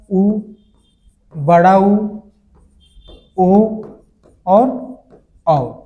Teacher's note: जिसके उच्चारण में हमारे ओठों की आकृति गोल हो जाए या वृत्त जैसा हो जाए वे स्वर वृत्ताकार स्वर कहलाएंगे